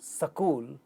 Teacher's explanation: they insert the consonant, the vowel sound a, in between the two sounds that are making cluster to break the cluster, and therefore school, ska in school becomes sakul.